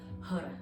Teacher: you're using the tip of the tongue in its relationship with the roof of the mouth to create that beautiful Har. So you're going to be saying it on a rapid, continuous feedback loop.